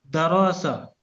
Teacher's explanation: রটি পুড়া হবে মোটা আওয়াজটি মোটা হবে